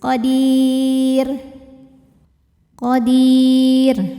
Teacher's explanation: Karena huruf sebelumnya ya sukun, maka otomatis rnya tipis. · Jika berhenti rnya dibaca secara tarqik. Sebab apa? Sebab rnya dimatikan.